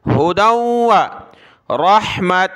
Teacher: تا کو واو کے ساتھ ملایا، ناک میں آواز پیدا کی تینوں جگہ پر